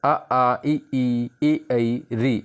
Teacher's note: इसमें होट गोल नहीं बनते हैं